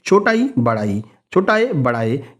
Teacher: जिन स्वरों के उच्चारण में जीभ का अगला हिस्सा काम करता है वे अग्र स्वर कहलाते हैं।